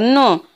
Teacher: या वर्णाचा तोंडाबरोबर थोडा नाकातून देखील उच्चार होत असतो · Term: अनुनासिक